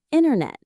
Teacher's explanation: But in casual fast American speech, something else often happens. The T after an N often disappears completely.